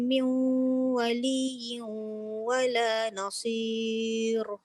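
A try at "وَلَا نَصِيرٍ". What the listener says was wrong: Jangan ditebal. Wala nasir. Nipis.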